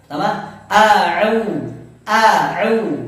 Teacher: huruf hamzah makharijul hurufnya di pangkal tenggorokan, sedangkan ain di tengah tenggorokan